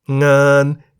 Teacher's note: งาน begins with a low class consonant ง งู, therefore based on the tone rules for a live syllable, งาน is in the middle tone.